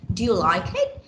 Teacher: it should go up yeah it should go up at the end